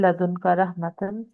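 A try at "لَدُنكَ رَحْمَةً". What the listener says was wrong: मिल्लादुन, मिल्लादुन का रहमा। हाँ, इस हा को ना थोड़ा जाके पेट में से निकाला कर। जो हा बनती है ना, पहले तो ता है ना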